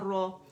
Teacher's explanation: رو موٹی ہوگی کیونکہ فتح کے ساتھ ہے